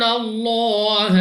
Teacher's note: لام اف اللہ سے پہلے حرف پر زبر ہے، تو اس لام اف اللہ کو بھی پر یعنی موٹا پڑھیں گے